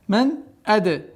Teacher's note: Здесь у нас правило изхар, четко ясно произношение нун.